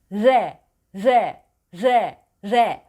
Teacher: dilin ucu Orada sürekli kalmıyor titriyor hançere sesi yani gırtlaktan Gelen sesi alarak dilin ucu tavana yani